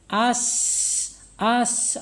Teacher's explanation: dekatkan ke depan mulut kemudian ucapkan as as akan terasa ya akan terasa napasnya atau udara kita mengalir menyentuh tangan kita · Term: alhams